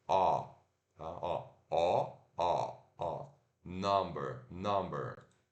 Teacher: a gente Relaxa os lábios agora ó ele vai parecer um pouquinho com som de a mas não é a é ó ó ó ó Number Number